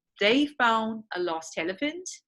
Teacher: So you drop the d, it's a consonant cluster in found, and lost, right?